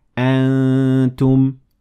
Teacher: my mouth is taking the shape of ta while I'm letting air through my nasal cavity to make it sound like this. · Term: ikhfa